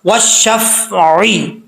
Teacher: आइन को पढ़ते वक्त आइन की आवाज़ आनी चाहिए, हमज़ा की आवाज़ नहीं आनी चाहिए।